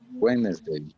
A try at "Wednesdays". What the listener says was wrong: do you hear the S? Do you hear the S? On Wednesdays. Listen. Wednesdays.